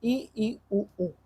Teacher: मुख्य द्वार लगभग बंद रहता है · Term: संवृत